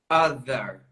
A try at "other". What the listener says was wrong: You can extend it a little more. Other. So that's one of the differences is the blown and the buzz TH.